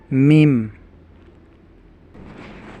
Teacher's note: Mim seperti huruf M, bertemunya bibir atas dan bibir bawah.